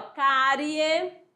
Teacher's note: cárie, ó, o I é semivogal, o E é vogal